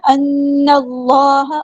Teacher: اللہ کا لام ہیوی ادا کرنا ہے، موٹا پڑھنا ہے. اس میں جلالت تفخیم ہے.